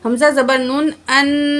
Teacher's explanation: حمزہ کو نون تشدید کے ساتھ ملائیں گے، اور نون تشدید اور میم تشدید میں ہمیشہ غنہ ہوگا